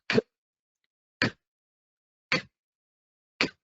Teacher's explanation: it is formed when you place your tongue, the middle of your tongue, to the roof of your mouth. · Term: k sound